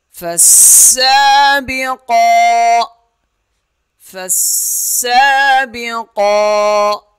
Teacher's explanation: قاف کھڑا زبر قا، قاف موٹا ادا ہوگا اور ایک الف کے برابر کھینچا جائے گا